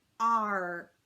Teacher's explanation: ark r this is a good one to start with because the k sound is also made in the back of our throat so we pull that tongue back for the r and we kind of leave it back there for arc you